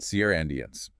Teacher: Two syllables, stress on the first.